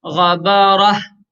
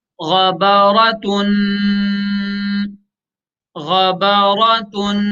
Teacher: और वक्फ की हालत में इस गोलता को हा से बदल देंगे।